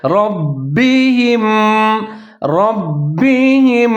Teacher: را کو موٹا کر کے پڑھیں گے، با کو ظاہر کر کے پڑھیں گے، قلقلہ کریں گے، ڈبل کر کے پڑھیں گے، یعنی کہ ربہم ربہم۔